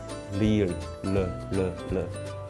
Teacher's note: you will notice that your tongue is in the middle of your palate